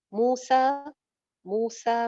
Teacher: मू एक अलिफ लंबा, सा भी एक अलिफ लंबा